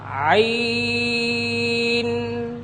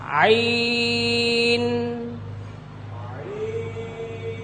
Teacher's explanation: আচ্ছা ভাইজান, আপনি লক্ষ্য করুন, আইন বলার শেষে দুই ঠোঁট সাথে সাথে লেগে যাবে না।